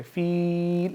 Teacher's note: क्योंकि या मद्दा है तो इसको हम थोड़ा लंबा करके पढ़ेंगे